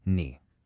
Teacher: that dipping and rising third tone